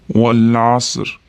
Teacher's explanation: Wal deganimizda mana o'rtada alif o'qilmaydi. Lamni sukunini to'liq beramiz. Wal asr. Asri bo'lib qolmasin.